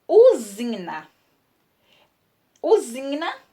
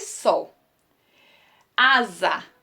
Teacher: o s entre vogais representa o fonema z